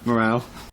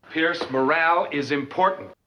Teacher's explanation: in british english you would say morale with an ah sound and in american english you would say morale with an ä sound and a very rounded r